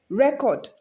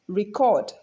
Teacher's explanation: when it functions as a noun, it is stressed on the first syllable usually. And when it is function as a verb, it is stressed on the second syllable usually.